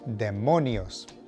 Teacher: Emphasis on the middle syllable